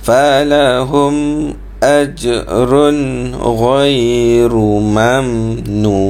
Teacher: mim mati, maka kita kena baca dia izhar syafawi di situ. Nyatakan mim tu biar jelas.